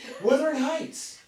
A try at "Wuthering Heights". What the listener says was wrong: Wuthering, not withering.